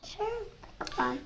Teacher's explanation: Finally, at age three, we see examples of gliding and cluster reduction in the phrase cherry picker truck, pronounced >> cherry picker truck >> The alveolar approximant r in the final coda of picker and the onset cluster of truck are merged together and replaced with a glide w. Though can pronounce the r noise in simpler coded positions as his mispronunciation of cherry, he defaults to glides when pronouncing lengthier phrases.